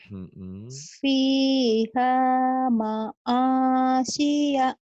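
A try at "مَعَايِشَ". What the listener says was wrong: Maisha terbalik. Terbalik. Fiha ma'ayisha.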